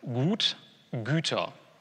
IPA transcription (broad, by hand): gu:t – gy:tɐ